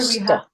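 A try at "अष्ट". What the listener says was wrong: It's back of the palate sound, not ash. It's not ashta. It's ashta. It's back of the palate sound.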